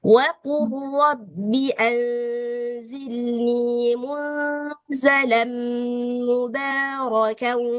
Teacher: semuanya lamnya melebur ke huruf ro. Seolah-olah si lam ini enggak ada langsung ke ro ya